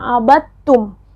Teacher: dhal yang berharakat sukun itu tidak dipantulkan